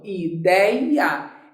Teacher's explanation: Qual é a sílaba mais forte de ideia? É o dei.